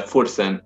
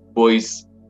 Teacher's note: se forman al aproximarse o tocarse el labio inferior y los dientes superiores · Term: consonantes labios dentales